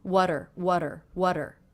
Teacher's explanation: the t here is now coming between two vowel sounds and I'm making that a flap T sound which sounds like the D between vowels